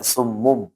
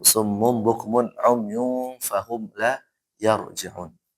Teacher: Dibalik suara nun ke mim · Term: iqlab